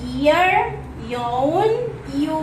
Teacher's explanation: According to voicing is voiced. Its place of articulation is palatal. Manner of articulation is approximant, like in ear, yawn, you.